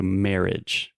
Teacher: the I directly after the two R's, we don't really pronounce that